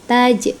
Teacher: qalqalah sugro, memantul ya bunyinya. Qalqalah sugro, qalqalah yang berada di tengah-tengah kalimat ya.